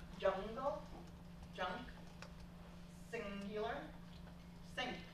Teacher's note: So the home organic nasal rule basically says the place of articulation for the nasalized consonant is the same as the place of articulation as the stop consonant that immediately follows. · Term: velar nasal